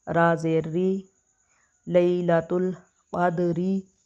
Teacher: را کو زیر کی وجہ سے بریک پڑیں گے